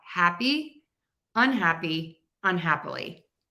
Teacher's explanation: Everything is going to sound a little bit different. Even my hap, even my stressed syllable will sound different because it's going to be shorter and quicker. So I have happy, unhappy, unhappily.